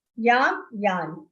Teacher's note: The first anuswar pronunciation is half ma. Second one is half na.